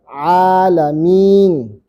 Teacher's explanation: A-nya panjang karena ada fathah ketemu alif. Mim-nya panjang karena ada kasrah ketemu ya.